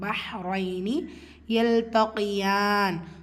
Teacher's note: லாம் சுக்கூன் கமரியா சேர்த்து ஓதணும். பஹ் ஹா சுக்கூன் லைட்டாக ப்ரொனவுன்ஸ் பண்ணணும்